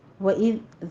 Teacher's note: वइज़ दाल को नरमी से पढ़ना है, इस पर सीटी की आवाज़ नहीं आनी चाहिए।